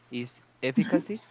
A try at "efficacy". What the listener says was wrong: That's right.